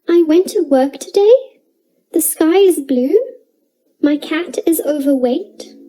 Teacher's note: sentences with a rising intonation it sounds like i'm asking a question